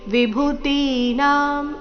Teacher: ಭೂ ಮತ್ತೆ ತಿ ಎರಡು ದೀರ್ಘ ಬರಬೇಕು. ಮುಂದಿನ ನಾ ಸಹ ದೀರ್ಘನೇ ಇದೆ.